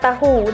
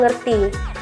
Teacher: t diucapkan penuh dalam kata tahu dan bunyi hentian glotis dalam ngerti